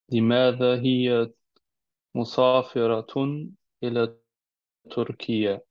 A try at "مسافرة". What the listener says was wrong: Versucht das dein Ziehen ein bisschen leichter wird, weil da erkennt man, dass du nicht Araber bist. Wenn du Musa, also Sin, Sa, Musafiratun.